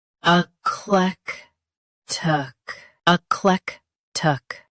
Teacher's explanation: Stress clec. Keep a soft and finish with tic clearly.